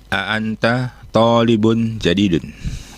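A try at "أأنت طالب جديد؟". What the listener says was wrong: A'anta talibun jadidun ya. Ini konteksnya pertanyaan berarti ya. Maka intonasinya naik. Kan ada A-nya di depannya ya. Apakah a'anta talibun jadidun? Jadi konteks pertanyaan itu intonasinya juga sedikit beda dengan pernyataan.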